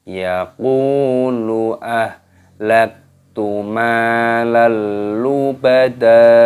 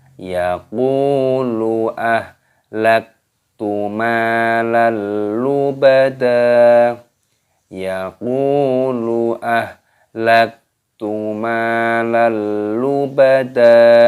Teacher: Di sini qafnya dipanjangkan, wawu sukun, matobi'i dipanjangkan 2 ketukan.